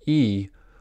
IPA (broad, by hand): i